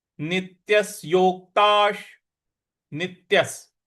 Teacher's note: नी के बाद जो आधा त है उस पर भी हमको आघात देना है और य के बाद जो आधा स है उस पर भी